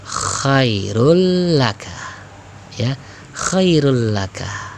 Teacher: Ketika dibaca ya, dileburkan, dihilangkan tanwinnya menjadi khairul laka ya, khairul laka. Tidak berlama-lama bacanya, ingat idgham bila gunnah ya, karena tanpa dengung ya, atau tidak didengungkan.